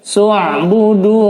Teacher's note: dibaca panjang karena dhammah diikuti waw sukun